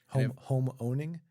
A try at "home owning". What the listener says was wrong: You said it so fast, it sounded like something.